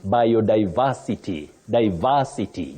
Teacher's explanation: the s in that word takes what we call the unvoiced sound s not the voiced sound Z